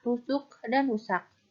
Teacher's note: Pada suku kata tertutup dibunyikan ke, tak lepas.